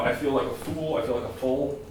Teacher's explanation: The laxing of the U before the L